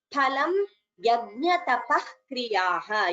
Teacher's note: here all of you tadityanabhisandhaya bha and dha are mahapranaha and here phalam pha is mahaprana